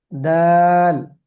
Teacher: জিহ্বার আগা সামনের উপরের দুই দাঁতের গোড়ার সঙ্গে লাগিয়ে উচ্চারিত হয়